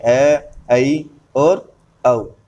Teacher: जिन स्वरों के उच्चारण में मुख विवृत स्वर से थोड़ा कम और अर्ध संवृत से थोड़ा अधिक खुलता है वह अर्धविवृत स्वर कहलाते हैं,